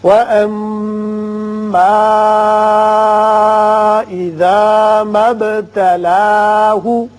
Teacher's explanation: اس کے بعد یہ مد منفصل کی علامت ہے، چھوٹا مد ہے، اس کو آپ 3 الف کے برابر اوپر کو کھینچیے. پھر با ساکن ہے، اس کی صفت قلقلہ ادا کریں